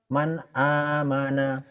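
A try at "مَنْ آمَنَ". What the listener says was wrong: Man idhar. Jadi belajar idhar itu sama seperti orang belajar nyentak gitu Pak ya. Dihentak latihannya. Tapi baca Quran nggak boleh dihentak. Bapak kayaknya vokalnya tuh masih ketahan ya.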